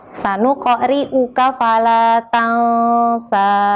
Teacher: Contoh dari huruf qalqalah qaf bisa dibaca dengan bergetar, mantap, dan seperti membalik. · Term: qalqalah sugro